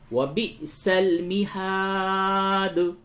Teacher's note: دال میں قلقلہ ہوگا حالت وقف میں، وقف کریں گے تو قلقلہ ہوگا، ورنہ یہاں پہ قلقلہ نہیں ہوگا.